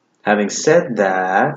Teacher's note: Something you should know is that wherever you see a comma, in addition, comma, additionally, furthermore, comma, what's more, comma, moreover, or however, comma, having said that, wherever you see a comma, you're going to have this rising, falling intonation before the comma